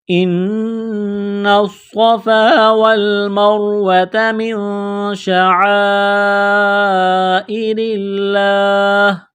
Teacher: تشدید کی وجہ سے صاد کو موٹا کرنا ہے، سیٹی کی آواز پیدا کرنی ہے · نون مشدد پر غنہ کریں گے، آواز ناک میں چھپائیں گے ، نون کو صاد کے ساتھ بس کرنا ہے، تشدید کی